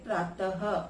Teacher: विसर्ग का उच्चारण अह के रूप में होता है, अर्थात अ प्लस ह।